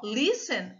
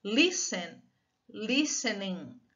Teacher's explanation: a sílaba forte está aqui no lis